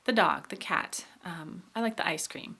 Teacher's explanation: when we say things rapidly, most of the time in speech, the word the comes out very small and very quick. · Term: schwa